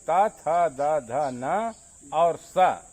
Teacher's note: ये दंत से बोले जाते हैं, दांत से, अर्थात इस सा को दंती सा भी कहते हैं।